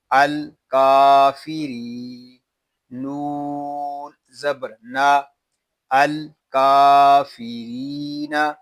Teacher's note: یہاں را کو ہم ایک الف تک کھینچ کر پڑھیں گے کیونکہ یہاں پہ یا مدہ ہو رہا ہے